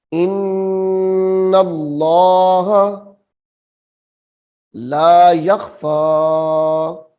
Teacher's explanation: جلالت اللہ کا نام یہاں پہ موٹا ہوگا اور انا پہ غنہ ہوگا